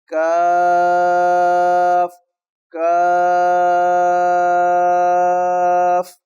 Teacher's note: اور آگے لفظ ہے کاف، یہ بری کر کے وہیں سے تھوڑا سا پہلے جہاں سے قاف ادا کریں گے، تالو کے نرم حصے سے تھوڑا سا پہلے سے یہ لفظ ادا ہوگا، لیکن باریک ادا ہوگا